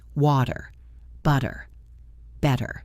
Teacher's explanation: It feels lazy on your tongue, right? Your tongue just taps the roof of your mouth very quickly. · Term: flap T